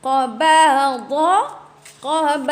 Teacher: Huruf dad tak boleh melantun ya